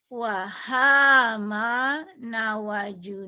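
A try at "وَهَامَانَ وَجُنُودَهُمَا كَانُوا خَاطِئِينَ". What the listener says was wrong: Jangan. Wahama. Jangan nyambung. Wahaman. Jadi satu kesatuan ya. Nggak boleh. Nggak boleh. Wahamana wajunu. Dahuma kanu khotiina.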